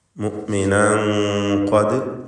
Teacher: മുഅ്മിനൻ ഖദ്, ഇവിടെ സാക്കിനത തൻവീനും ശേഷം ഖാഫും വരുന്നുണ്ട്. തൻവീനിനെ ഖാഫിന് മുമ്പിൽ ഇഖ്ഫാ ചെയ്യണം, ഇഖ്ഫാ ഹഖീഖി മറച്ച് മണിച്ചുച്ചരിക്കുക.